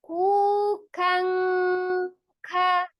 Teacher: bukan ujung lidah yang menyentuh, tapi pangkal lidah. Berarti kan langsung kof, bukan mahrot nun, tapi mahrot kof. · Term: makhraj huruf kof